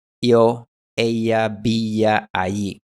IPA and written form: ˈjo, eja, bija, aji (yo, ella, villa, alí)